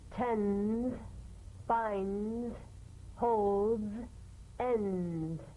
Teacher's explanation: Press the tongue against the upper gum ridge for the D drum beat and peel the tip down a bit as the Z vibrates just before the tongue springs away. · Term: staccato Z